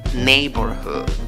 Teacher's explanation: Le pones fuerza a la primera sílaba y a la última, pero la que va a ser más prominente es la primera. · En la segunda sílaba tienes una O. En la pronunciación, en la segunda sílaba tienes schwa, la que no es ni A, ni E, ni O.